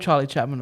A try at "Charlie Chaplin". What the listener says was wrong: Charlie Chaplin, not Chapman. You said Mun. It sounded like it.